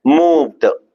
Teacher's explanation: The V is coming in the middle, but still you need to try biting your lower lip.